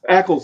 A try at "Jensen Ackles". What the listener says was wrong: Not ankles. There's no N. There's no N in his name.